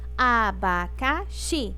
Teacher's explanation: O xi é a sílaba mais forte